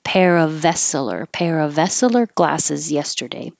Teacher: Bought a pair of, and the next word after of starts with a vowel, so you do keep the V and it will connect.